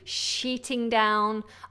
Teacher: You have to keep that vowel in the middle, long E, sheeting down. Otherwise, if you have a short vowel, it will sound like you're saying a bad word.